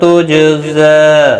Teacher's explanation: جیم ساکن پر قلقلہ ہوگا